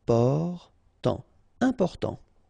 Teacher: you've got this EM, and after that it's a consonant, so it is here nasal